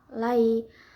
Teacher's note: Lai ada harflin karena ya sukun sebelumnya fathah dibacanya dilunakkan.